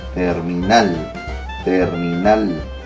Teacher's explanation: La mayor fuerza de voz está en nal.